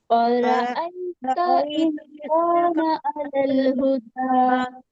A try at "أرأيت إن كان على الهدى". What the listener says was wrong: ان کانا نہیں اخفا کریے اس کو ان کانا